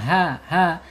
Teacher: Hum ha secara makhraj ada di tenggorokan bawah